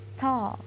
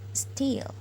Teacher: There is aspirated t in the first example, and the rest are unaspirated t.